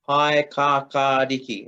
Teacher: And just notice that we do have our lengthened vowel just after the K.